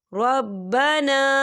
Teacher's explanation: یہاں پر الف مدہ بھی ہو رہا ہے اور اس پر چھوٹی سی مد بھی ہے، تو ہم اسے 4 حرکت کی بابر کھینچ کے پڑھیں گے